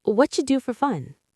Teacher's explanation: Squish the words together. It sounds like whatcha. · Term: fast native version